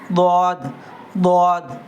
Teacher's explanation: ضاد ضاد موٹا دال یعنی زبان کا سائڈ حصہ بائیں دونوں دانتوں کے اندر لگا دیں گے اور نکالیں گے ضاد ضاد.